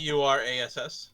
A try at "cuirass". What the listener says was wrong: I think there's an I in there. my god, it's pronounced Queerass. It is literally pronounced queer ass.